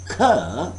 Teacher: Soft palate is blocking the air. The airflow is blocked at that spot, at that point. So that's why we are capable of producing k sound.